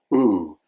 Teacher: the lips become a circle and the tongue is level in the mouth